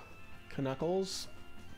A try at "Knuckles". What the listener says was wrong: No, Knuckles. But you can't pronounce the K. Learn to read.